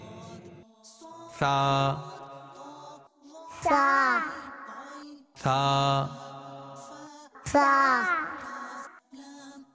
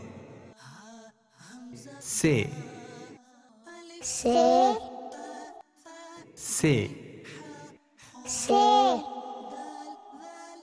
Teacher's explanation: अरबी में सा की अदायगी का तरीका यह है कि जबान का सिरा और ऊपर के दांतों के अंदरूनी किनारे से अदा होता है